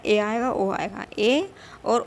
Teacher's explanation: जो मुंह का भाग है वो बंद सा ही रहता है, यानी ज़्यादा नहीं खुलता है, तो उसको क्या बोलेंगे, हम अर्धसमृत स्वर कहेंगे।